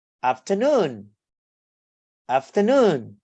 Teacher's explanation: So you stress on the sub, and the primary stress on the third syllables